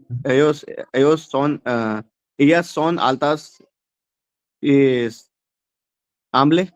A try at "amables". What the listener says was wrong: हाँ, अमाबलिस, नॉट आमले, अमाबलिस।